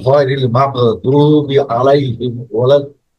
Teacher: গটা আসবে গলার উপরে গলার ভিতরে